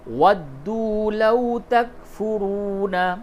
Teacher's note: واو مدہ کو کھینچ کر کے پڑھیں گے اور واو لین کو نرمی کے ساتھ ادا کریں گے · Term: واو مدہ اور واو لین